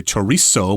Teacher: But most people, and Mexicans as well, just say chorizo with an S sound.